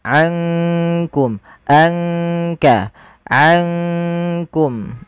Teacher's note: Kalau idgham itu memasukkan, sedangkan ikhfa di antara keduanya, di antara izhar ataupun idgham. Maka ankum langsung kepada makhraj disamarkan kepada makhraj kaf